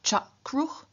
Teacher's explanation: root final vocalic r changes into consonantal r